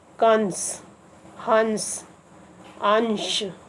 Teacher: अनुस्वार यानी अंग, इस ध्वनि का उच्चारण म या न के समान होता है और इसका चिन्ह है बिंदी।